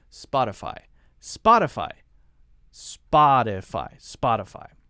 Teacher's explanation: very light T sound sounds like a light D